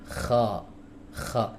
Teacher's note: huruf k keluar dari tenggorokan bagian atas disertai hams ya kalau enggak disertai hams jadi huruf gin